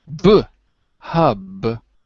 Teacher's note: Hub uses both of your lips it's bilabial